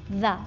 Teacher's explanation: ज़बान की नोक सामने के दांतों के दरमियान आती है, देख सकते हैं, दरमियान दो दांतों पे वाइब्रेशन, आवाज़ जारी रहती है, इर्तियाश पैदा होता है, आवाज़ आती रहती है, रुकती नहीं है, और वाइब्रेशन पैदा होता है। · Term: ज़ाल